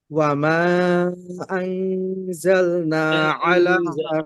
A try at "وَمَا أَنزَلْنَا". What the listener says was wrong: একটু, আর একটু ফাঁকা রাখেন, আনজা, আনজা, জায়ের কাছে যান, আনজা।